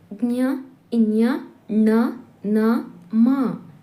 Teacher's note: ವರ್ಣಗಳು ನಾಸಿಕದ ಸಹಾಯದಿಂದ ಹುಟ್ಟುತ್ತವಾದ್ದರಿಂದ ಇವು ನಾಸಿಕಗಳು ಅನುನಾಸಿಕಗಳು ಎನಿಸುವುವು